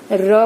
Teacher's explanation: जीभ स्पर्श तो करती है लेकिन पूर्ण रूप से नहीं करती, झटके से जरा सा स्पर्श करती है और हट जाती है, तो वो अंतःस्थ होता है।